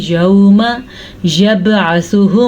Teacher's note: बा के ऊपर कलकला हो रहा है, सा को हम नरमी से पढ़ेंगे, अल्लाह का नाम हम पुर पढ़ेंगे क्योंकि अल्लाह के नाम से पहले पेश है।